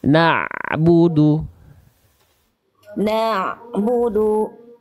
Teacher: ada bunyi ain dilafalkan dari tengah tenggorokan.